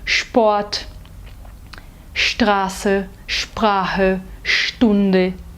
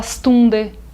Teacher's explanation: o ST e o SP no início de palavras não são pronunciados de forma seca Eles são pronunciados de forma cheia como se fossem o nosso x